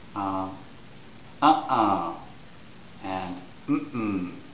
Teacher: for no it's the first syllable which is stressed